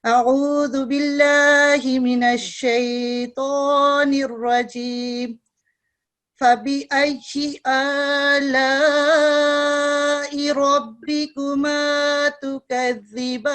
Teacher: इसको ये मुफख्खम रॉ है, तफखीम रॉ, इसको पुर करके पढ़ते हैं